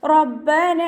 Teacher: നൂനിൻ്റെ കൂടെയുള്ള അലിഫ് മദ്ദിന് 2 കൗണ്ട് നീട്ടിക്കൊടുക്കുക.